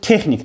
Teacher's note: Vurğu son hecada deyil. Vurğu ilk hecanın üzərinə düşür.